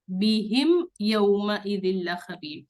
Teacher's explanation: ٹھیک ہے، دیکھیں پہلے والے میم، یہ دو میم ساکن ہے، ٹھیک ہے، پہلے والے میم ساکن کے بعد با ہے تو اس پر ہمیں اسٹریچنگ کرنی ہے، ربہم ہم اسٹریچ کریں گے، لیکن دوسرے میم کے بعد جو ہے وہ با نہیں ہے تو اس میم کو جلدی اور شارٹ پڑھنا ہے